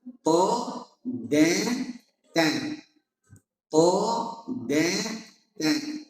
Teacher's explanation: Tho tebal dan kuat. Ta kuat tapi tipis. De kuat tapi tipis.